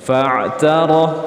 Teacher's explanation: ra dibaca tafkhim atau tebal, karena ra yang berharokat fathah atau dhammah dibaca tebal.